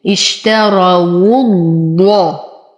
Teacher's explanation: ولاحظ أن الواو هنا مضمومة فهي تخرج من الشفتين اشتروا الضاء. أنتقل من ضمة الواو إلى تشديد الضاد مع التفخيم